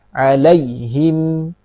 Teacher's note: Ya sukun sebelumnya fathah, dia punya sifat lin atau layin. Sifatnya lembut. Jangan terbaca terlalu keras.